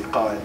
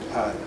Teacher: they have a qaf and not a glottal stop